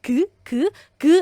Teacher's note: so soft G so almost k